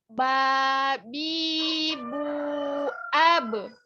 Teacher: Jadi ba ini ketika sukun maka dipantulkan. Kenapa? Karena dia memiliki sifat qalqalah, memantul.